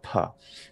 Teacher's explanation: we have to add what's called aspiration a bit of air onto it a little like an h sound